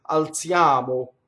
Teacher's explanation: And we know that O is closed because it's not on the stress.